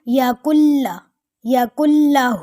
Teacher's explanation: یہاں بھی غنہ نہیں ہوگا، کاف کو لام کے ساتھ دبا کے پڑھیں گے